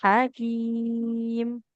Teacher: di sini adanya huruf ha. Ha ha di tengah tenggorokan